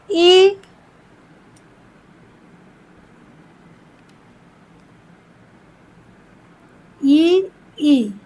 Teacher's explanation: इ ई का उच्चारण कहां से होता है? तालु से होता है।